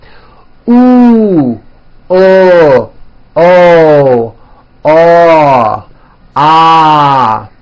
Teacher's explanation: notice how my jaw is opening on each one and also notice how my lips are coming forward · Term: back vowels